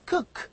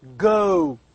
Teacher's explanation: sounds that are produced with the back of the tongue against the velum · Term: velars